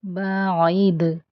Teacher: بعد، اور عین کو وسط حلق سے ادا کریں گے، بعید، دال ساکن ہے اس لیے اس پر قلقلہ ہوگا، یعنی دال کی آواز پلٹ کر آئے گی۔